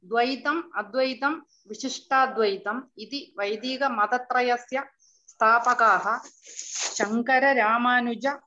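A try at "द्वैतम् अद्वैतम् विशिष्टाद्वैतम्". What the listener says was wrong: Neenga vandu and while pronouncing and takaram la neenga and malayalam accent illama நீங்க வந்து தகாரத்தை தகாரமாவே pronounce பண்ணணும்.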